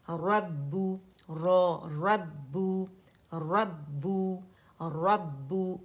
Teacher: रा मोटा है और बा बारीक है और मुशद्दद है, तो पहली बा पे आवाज़ बंद होगी